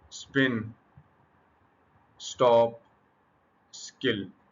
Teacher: इनसे पहले एस आ गया है तो लिहाजा इसने इनको रिड्यूस कर दिया। लिहाजा यहां पर ये एस्पिरेटेड नहीं है।